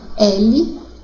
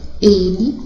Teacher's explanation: quando eu falo L, acento aberto, ele, acento fechado